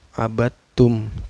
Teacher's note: Karena ada dal sukun bertemu dengan huruf ta. Abattum, cara bacanya memasukkan ke huruf ta. Huruf dalnya tidak dibaca ya. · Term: idgham mutajanisain